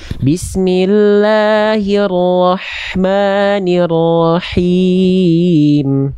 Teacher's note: H kecilnya dia pastikan dia berbisik dari tengah tenggorokan